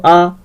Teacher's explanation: এই কেন্দ্রীয় স্বরধ্বনি হয়ে গেল আ